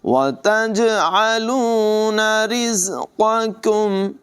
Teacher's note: وَتَجْعَلُونَ رِزْقَكُمْ، را کی ادائیگی بریک ہوگی، زا میں سیٹی کی آواز نمایاں ہوگی، قاف کو پر پڑھیں گے اور یہ جو ڈنڈی والا کاف ہے اسے باریک پڑھیں گے، چونکہ دونوں اکٹھے ہیں تو بڑے دھیان کے ساتھ پہلا قاف پر ہوگا، دوسرا کاف باریک ہوگا۔